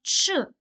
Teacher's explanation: ч - це приголосний твердий глухий